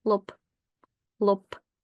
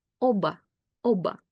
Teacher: voiced B loses its voice and becomes its voiceless counterpart P